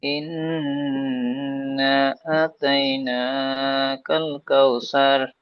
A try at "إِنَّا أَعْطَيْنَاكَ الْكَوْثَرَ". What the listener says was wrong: হাজি সাহেব আপনি পড়ছেন, এখানে কিন্তু একটু বেশি টান হবে, 3 থেকে 4 টান হবে। ইন্না আ আ'তাইনাকাল কাউসার। এখানে কল, কল টাইপের হয়ে যাচ্ছে, কাল।